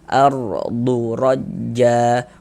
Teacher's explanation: Cuman di sini yang kita temui tanda baca fathah. Maka huruf ra sukunnya juga dibaca tabkhim. Dibaca tebal. Tebalkan huruf rnya ardu rajja.